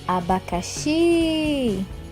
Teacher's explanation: na palavra abacaxi, a sílaba tônica é o xi.